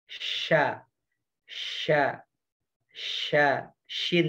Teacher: Tengah lidahnya ya naik ke atas yang ke langit-langit